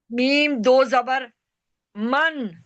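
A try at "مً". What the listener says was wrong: मन बोला है तो अन कहाँ से आ गया? जो पढ़ा है वही बोलना है ना। फिर अन। अन। वो तो हमजा दो जबर अन होता है।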